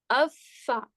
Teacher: اسی طرح سے حمزہ فا زبر اف اور فا زبر فا، اف فا، فا کہاں سے ادا ہو رہا ہے؟ کہ اوپر کے 2 دانت نیچے والے ہونٹوں کے اندر کی سائڈ پہ، یعنی اندرونی حصے پر لگ کر ادا ہو رہا ہے فا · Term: فا کا مخرج